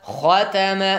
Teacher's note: خا از جمله حروفی که باید استعلا هست پر خانده شود